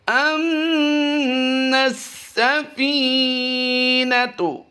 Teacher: فی کو ہم لمبا کریں، یا مدہ ہے.